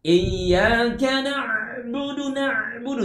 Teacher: ada juga yang membacanya melalui rongga hidung sehingga suaranya terkesan ngirung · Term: sengau